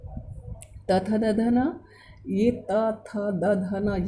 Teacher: त वर्ग के जितने भी व्यंजन है, व्यंजन वर्ण है, वो दांतों से टच हो रहे हैं। आप ध्यान देंगे त बोलते हैं थ द, तो ये दांतों के बीच में आ रहा है।